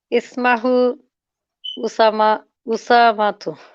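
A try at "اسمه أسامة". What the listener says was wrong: I hope you didn't say Ismahu. It's Ismuhu.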